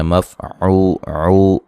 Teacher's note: عین کو واضح نکالیں گے، اور یہ واو مدہ ہے، لا وقفن، اس کو ہم الف مدہ میں تبدیل کر دیں گے۔